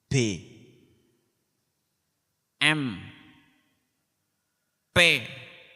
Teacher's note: Padahal antara B dengan M dengan P itu semuanya adalah karena pertemuan dua bibir, tapi bisa menghasilkan huruf yang berbeda-beda.